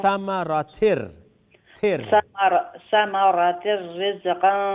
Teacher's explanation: کیونکہ ثمرة میں ادغام ہے نا. ادغام وداؤٹ غنہ. تو ثمرة رزقا رز زا پہ قلقلہ نہیں ہے جی.